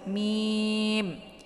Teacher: Jadi 'mim' ini juga dibaca dengan panjang enam harakat